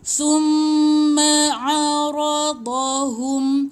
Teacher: Tahan mim sabdu. Mim sabdu 2 harakat.